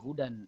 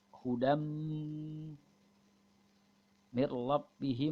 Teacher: Ingat tanwinnya hilang, bunyinya suara mim.